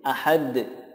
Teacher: Ada tambahan qalqalahnya karena dal disukunkan menjadi qalqalah